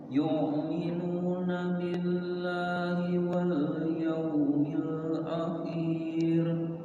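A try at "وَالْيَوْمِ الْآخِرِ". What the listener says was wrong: Akhir. Khi-nya pendek. Ulang.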